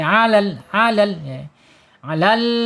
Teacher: Alisan ya, alisan ujung lidah menyentuh langit-langit yang depan ya. Ujung tepi lidahnya menyentuh langit-langit yang depan ya, berdekatan dengan pangkal gigi sari